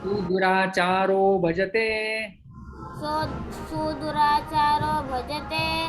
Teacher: अपि अपि अपि अपि चेत् चेत् चेत् चेत् दुराचारः दुराचारः दुराचारः दुराचारः भजते भजते भजते। भजते यहाँ पर संधि हो जाती है, विसर्ग का ऊत्व और फिर वो ओ में परिवर्तित हो जाता है।